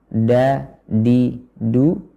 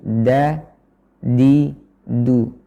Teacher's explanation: dengan menempelkan ujung lidah ke Pangkal gigi seri atas bukan ke langit-langitnya